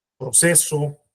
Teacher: el acento prosódico está en la sílaba Pro